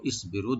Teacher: রটাকে মোটা করে এক আলিফ টানবো